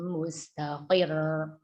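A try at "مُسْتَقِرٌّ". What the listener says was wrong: Ya, mustaqil. Coba, mustaqil. Itu tipiskan. Roknya tipiskan, Ibu. Karena sebelum rok harokatnya kasrah. Mustaqil. Qil.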